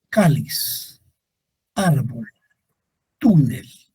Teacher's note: Las llanas. La sílaba tónica se encuentra en penúltimo lugar.